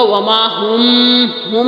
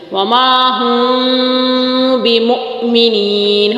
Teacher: اچھا یہاں پر میم کے بعد با ہے تو یہاں پر ایک قاعدہ ہے تجوید کا کہ میم کے بعد با آ جائے تو ہونٹ مکمل بند نہیں ہوں گے. یہاں پر یوں نہیں ہوگا وما ہم نہیں ہوگا.